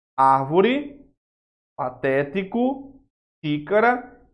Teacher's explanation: veja que está sendo acentuada na anti penúltima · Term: antepenúltima